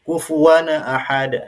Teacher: Bunyi tanwinnya dipantulkan dulu, baru kemudian bunyi hamzah